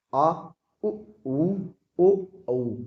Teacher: जीभ का पश्च भाग यानी पिछला भाग इसमें कार्यरत है, इसलिए इन्हें पश्च स्वर कहते हैं